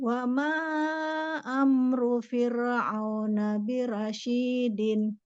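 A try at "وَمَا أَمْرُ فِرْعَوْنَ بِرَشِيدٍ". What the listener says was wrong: Bukan bira, ra, tebal ra.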